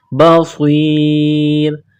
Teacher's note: صاد کو موٹا کرنا ہے، سیٹی کی آواز پیدا کرنی ہے، بصیر. جب وقف کریں گے تو را کو سائلنٹ کریں گے.